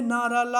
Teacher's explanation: जिन व्यंजनों के उच्चारण में जीहा ऊपरी मसूड़ों का स्पर्श करती है उन्हें वत्सर व्यंजन कहते हैं